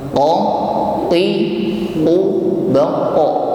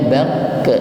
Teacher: qalqalah atau pantulan yang timbul pada huruf qaf di sini pantulannya berbunyi tebal.